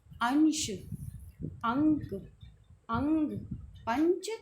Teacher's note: इसका उच्चारण करते समय नाक से अधिक वायु निकलती है और मुख से कम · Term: अनुस्वार